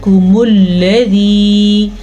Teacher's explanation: لام کو لمبا نہیں کرنا، لام کے اوپر زبر ہے، اور لام کو پر بھی نہیں کرنا